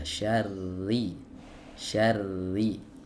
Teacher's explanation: makhrojnya ada di ujung lidah beserta punggungnya bertemu dengan dengan gusi di atasnya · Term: huruf Ra